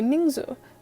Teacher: first syllable second tone second syllable neutral